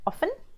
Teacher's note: they say often I often go somewhere which is incorrect again you have to omit the T in the middle of the word